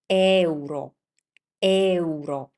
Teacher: And in Italian, when you see this situation, so consecutive vowels, many vowels next to each other, you need to pay attention because we do something different from English. We don't collapse them into one sound like you do in English, but we pronounce each one of them like if they were self-standing.